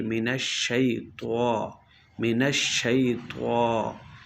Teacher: खड़ी हरकत को एक अलिफ की मकदार दराज करते हैं, यानी एक बंद उंगली को दरमियानी हालत में खुलने के, ना ज़्यादा तेज़ ना ज़्यादा आहिस्ता, जितनी देर लगे उतनी देर जो है आवाज़ जो है जारी रखी जाएगी।